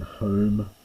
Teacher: it's a long O as in home, probably softening a little bit by New Testament Greek times